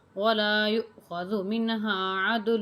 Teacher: یا جو ہے یہ حمزہ کے ساتھ ملا کے پڑھی جائے گی، تھوڑا سا جھٹکا لگا کے